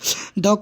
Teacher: द का उच्चारण स्थान क्या है तो दंत